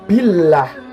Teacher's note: lafadz Allah yang didahului oleh huruf kasrah jadi membacanya itu tipis